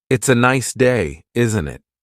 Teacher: The tone going up at the end tells the listener that you're asking a question. If you're making a statement, the intonation usually goes down at the end.